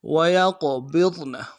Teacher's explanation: صافات وَيَقْبِضْنَ واو اگلے واو کو نرم سے ادا کریں گے، یا قاف کے ساتھ ملانا ہے، قاف موٹا ادا کریں گے، اور با کو ضاد کے ساتھ ملائیں گے، ضاد کو موٹا ادا کریں گے، نون کو نرم سے ادا کریں گے.